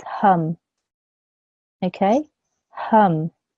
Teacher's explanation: All you hear is, you wouldn't hear a ma sound because the meme has a sukoon on top of it. You would just hear a m sound. So together with the ha, it's hum. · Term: meme sakin